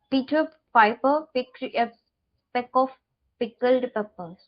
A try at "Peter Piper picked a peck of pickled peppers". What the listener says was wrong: Now when you're saying picked, there are two sounds which are coming. Picked, which is incorrect. It is one sound. Picked, picked, picked.